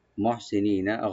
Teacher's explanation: গায়রা মুসাফিহিন, তাহলে মুহসিনিনা হাটাকে একটু আমরা হাউস করবো, সোয়াটাকে একটু ডিপ করে নি এখানে টানবো, লাস্টে নুনে কোনো টান নাই